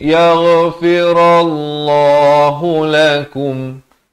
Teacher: ghain di hujung kerongkong